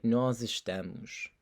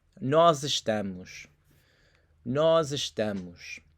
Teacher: nós ends with the s, that z sound, the nós. It kind of blends right into the verb in this case.